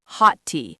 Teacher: >> It sounds like hot tea. You don't produce two separate T sounds. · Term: merging consonants